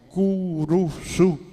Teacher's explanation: los guaraníes no podían pronunciar dos consonantes seguidas la cruz se transformó en curusu porque le intercapa la u entre la c la r y